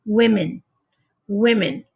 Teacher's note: The O is not going to be a long O anymore. It's going to be a short, like I. It changes the sound.